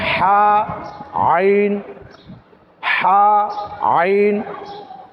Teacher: হলকের কণ্ঠালি চেপে উচ্চারণ করতে হয় মধ্যখানের অংশ থেকে চেপে উচ্চারণ করতে হয়